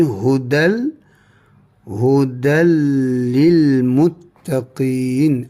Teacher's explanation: Hukumnya adalah idgham bila gunnah. Maka tidak berlaku dengung di sini ya.